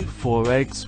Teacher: we can hear the linking R